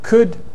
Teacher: Could is moving in the direction of kit, but it's retaining its rounding. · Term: back vowel fronting